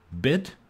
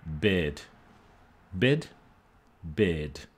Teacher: vowel length is the one that distinguishes between these two words